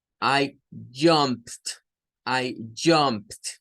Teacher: Bueno, y para cerrar con esta página, tenemos un pequeño cuadrito que nos dice, para las afirmativas hay que usar la terminación ed, por ejemplo, jump se le agrega ed, pero jump es de los que terminan en p. Ese no es un sonido vibrante.